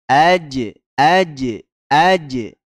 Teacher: AJ ada Jim yang sukun kita pantulkan karena huruf Jim masuk ke huruf Qalqalah AJ AJ AJ makhrajnya di tengah lidah yang dibenturkan ke langit-langit